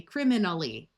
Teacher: the A sounds more like a short U or a short I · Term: schwa